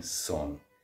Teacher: my dialect is Munster Irish, West Kerry specifically, so for that, this word S-I-N, I'm saying son. In other dialects, that would be pronounced shin.